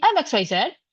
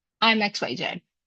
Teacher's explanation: If I say I'm XYZ, my tone rises at the end. But if I say I'm XYZ, my tone, now I'm talking with a falling tone. That's a downward intonation.